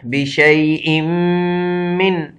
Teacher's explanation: 4 الف کے برابر یہ حرف مدہ لگا ہوا ہے، اس کو 4 الف کے برابر لمبا کرنا ہے. بِشَيْءٍ، یہاں چونکہ میم پر شد ہے تو اس وجہ سے مشدد یہ غنہ کیا جائے گا. بِشَيْءٍ مِّن، اب چونکہ نون ساکن ہے، آگے حرف حلقی میں سے آیا ہوا ہے، تو اس لیے یہ نون اظہار کر دیا جائے گا، تو نون ظاہر کر دیا جائے گا، نہ کہ اخفا کیا جائے گا.